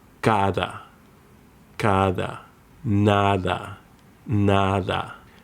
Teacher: Between the vowels, it comes softer, like the TH in English, as in this. Similar to the Arabic dal.